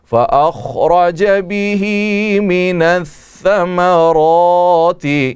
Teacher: را کو موٹا کر کے منہ بھر کر کے پڑھیں گے